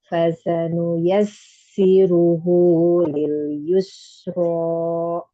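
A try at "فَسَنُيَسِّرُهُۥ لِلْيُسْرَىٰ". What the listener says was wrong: Jangan ada hamzahnya. ada hamzahnya.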